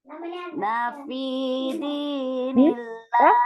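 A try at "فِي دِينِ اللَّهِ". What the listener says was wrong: Kalau ulangnya jangan dinafi tapi fi dinillahi ya. Fi dinillahi. Jangan dari nanya. Karena huruf na ya, karena na ini dia satu kata dengan yadkhuluna ya.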